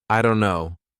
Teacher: The D is actually replaced with an R, so it becomes irono.